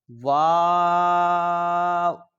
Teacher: دونوں ہونٹوں کی گولائی سے ادا ہوتا ہے